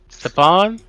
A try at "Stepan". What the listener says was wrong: No, Stepan with a P.